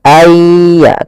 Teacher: Kalau di sini hurufnya adalah ya, maka masukkan nunnya kepada ya sehingga nunnya hilang tinggal ya ay ditasdidkan dia seakan-akan yanya dua yaitu ya sukun dan ya yang bertasdid. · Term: idgam bighunah